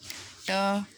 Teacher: और उसके बाद ट वर्ग में भी मूर्धन्य जो ट, तो उसमें जिह्वा पूरी मोड़ कर तालु के साथ यानी तालवी के हिस्से के साथ जुड़ती है